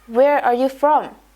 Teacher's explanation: when asking a question, the tone rises at the end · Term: intonation